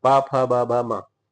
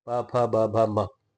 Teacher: सबको बोलने में क्या हो रहा है? ओष्ठ टच हो रहे हैं तो इसका उच्चारण स्थान हो गया ओष्ठ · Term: प वर्ग